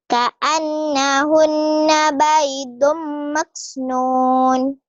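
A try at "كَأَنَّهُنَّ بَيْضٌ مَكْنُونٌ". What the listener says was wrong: Maksnya kurang hamas tuh, Neng. Nah, lagi. Ka'annahunna baydum maknun.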